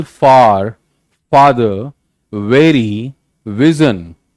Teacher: labiodental, involve the bottom of the lip and top teeth. Bottom of lip and top teeth.